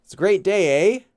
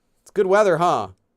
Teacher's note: the intonation even goes down but it's still requests for a reply